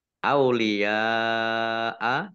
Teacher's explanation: karena bertemu dengan huruf hamzah dalam satu kata maka menjadi mat wajib muttasil. Dibaca panjang 5 harokat.